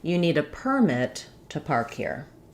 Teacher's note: there's no change to the vowel sounds, but the change happens on the vowel length, how long I hold it. So in permit, mit is nice and long and clear, and per is going to be very short, permit.